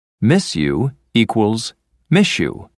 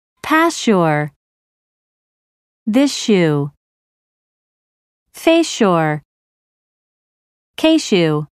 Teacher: begins with ye the combination of the two sounds changes to a sh sound